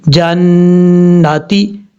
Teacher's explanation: اب اس کے بعد ہے جیم نون زبر جن، نون زبر نا، تا زیر تی، جناتی، نون کے اوپر شد ہے، غنہ کریں گے ایک الف کی مقدار. اب تا کو لمبا نہیں کرنا، جناتی نہیں پڑھنا، اس چیز کا خاص خیال رکھنا ہے.